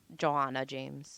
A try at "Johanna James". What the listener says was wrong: Johanna. There's no O. Johanna. Johanna James.